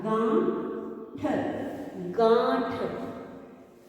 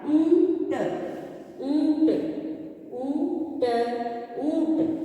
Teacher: इसलिए मैंने आपको बताया है कि चंद्र बिंदु की मात्रा को हम अनुनासिक भी कहते हैं, क्योंकि जब हम इसे पढ़ते हैं, इसका उच्चारण करते हैं तो ध्वनि नाक और मुंह दोनों से आती है, इसलिए हम इन्हें अनुनासिक भी कहते हैं।